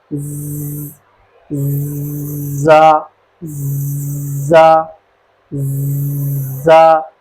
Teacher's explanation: اس کے اندر تھوڑی سی سختی کرنی ہے، ہلکی سی سیٹی کی آواز آنی چاہیے، اتنی بھی نہیں آنی چاہیے کہ حرف سین بن جائے، کیونکہ سین بھی اسی جگہ سے ادا ہوتا ہے۔